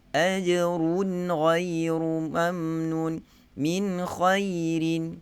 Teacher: Kalau kita baca dengan ghunnah pada huruf kha dan huruf ghin, nun mati dan tanwin bertemu dengan kha dan ghin, yang sepatutnya pada semua imam kecuali Abu Ja'far membaca dengan izhar. Kita kena baca dengan izhar.